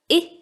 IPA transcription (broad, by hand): ɪ